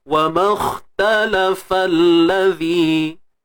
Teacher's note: gugurkan alif mat tersebut dan masuk terus pada kha.